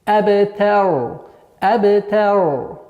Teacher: А в конце дамма аннулируется, переходит сукун, и ра становится твердой.